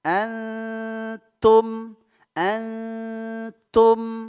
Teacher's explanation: huruf ta satu makhraj dengan huruf Dal yaitu ujung lidah bertemu tempat tumbuhnya dua gigi seri atas · munfasil Antum Antum ada nunk bertemu huruf Ta ini ikhfa Hakiki ikhfa Hakiki jadi disamarkan nunnya ya Nun bertemu ta